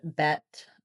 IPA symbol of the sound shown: ɛ